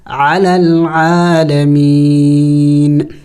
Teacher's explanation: وقف میں ہم نے اس نون کو سائلنٹ کرنا ہوگا، یعنی ساکن کرنا ہوگا، لیکن آخر میں نون کی آواز نکلنی چاہیے